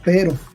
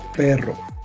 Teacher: el sonido R simple lo tenemos en la palabra pero. Pero el sonido doble o trabado o complicado, como suele llamársele, de la R lo tenemos en palabras como perro